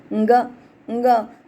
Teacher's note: તો આ અંગ કંઠ્ય અનુનાસિક છે